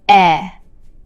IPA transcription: ɛ